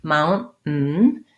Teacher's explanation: We just do a very short N and then another short N. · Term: stop T